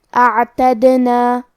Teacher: حرف دال پہ جزم ہے لہذا ہمیں دال کو قلقلہ سے پڑھنا ہے اور قلقلہ کا معنی ہے حرف ساکن کو ہلانا، تو ہم حرف دال کو ہلاتے ہوئے یہ کلمہ کو پڑھیں گے